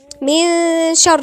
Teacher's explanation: يبقى ملك الناس، إله الناس، إي بالإنجليش، مش إله لا، إله الناس، من شر، في غنة إخفاء، غنة إخفاء. من شر يعني النون دي كأننا ما منطقهاش خالص، لساني كده جاي في النص كده ورايح عند حرف الشين. من شر، من، وغنة ايه مرققة مش مفخمة.